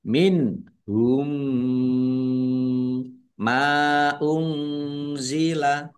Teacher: Mim sukun bertemu dengan huruf mim. Bacaan idgham mutamasilain atau idgham mimi ya. Dibaca mendengung. Ada mim tasdid ditahan biar tampak mendengungnya.